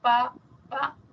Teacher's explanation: Cuando digo bilabial como pa pa son los dos labios